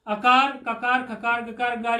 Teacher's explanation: ये कवर्ग और हकार और विसर्ग ये सब कंठ से बोले जाते हैं